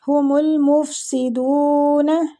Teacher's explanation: سین باریک ہے سیٹی والا